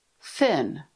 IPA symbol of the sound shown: θ